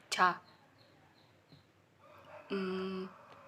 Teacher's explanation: voiceless palatal affricative sound